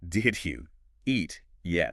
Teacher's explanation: The stress is only on eat and yet. Did you is just the grammatical setup.